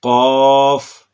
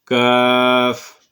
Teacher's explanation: یہ دونوں حروف جو ہیں یہ زبان کی جڑ سے ادا ہوتے ہیں، لیکن قاف زبان کی جڑ اور تالو کے نرم حصہ سے ادا ہوتا ہے، جبکہ کاف یہ زبان کی جڑ اور تالو کے سخت حصہ سے ادا ہوتا ہے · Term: حروف لہویہ